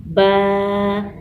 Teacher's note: دونوں ہونٹوں کو آپس میں ملانے سے با ادا ہوتا ہے